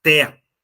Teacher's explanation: duas sílabas sendo a última mais forte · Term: oxítona